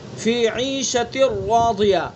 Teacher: تا کے نیچے تنوین اور اس کے بعد را، تو تنوین کی آواز ختم ہو گئی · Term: ادغام تام